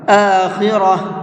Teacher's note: گولتا پر میں نے وقف کیا ہے تو گولتا کو ہا بنا کر کے پڑھا ہے